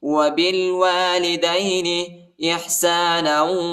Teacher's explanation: نون کو واو کے ساتھ ملائیں گے اور غنہ بھی کریں گے